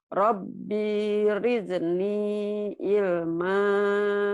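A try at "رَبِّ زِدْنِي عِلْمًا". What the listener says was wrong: Rabbi zidni, bukan rizni. Itu bukan ra tapi zai. Zai. Rabbi zidni ilma.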